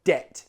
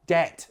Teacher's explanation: don't pronounce the B in debt